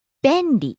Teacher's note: Starts high, comes down on the second syllable.